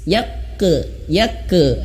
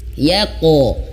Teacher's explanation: Yang benar adalah langsung pantulkan dan pantulannya itu tebal.